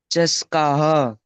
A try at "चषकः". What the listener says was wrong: चषकः। श पूरा आना चाहिए। चषकः।